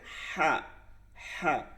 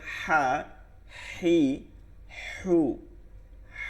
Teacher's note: হা হালকের মধ্যখান থেকে আওয়াজটা ফিসফিস আওয়াজ এবং বাতাস বের হয়ে আসবে